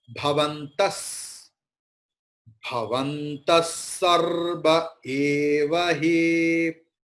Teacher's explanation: Here Visarga just beside the Sakara, Saraswati Sakara. So Visarga's pronunciation will be transformed into Sakara.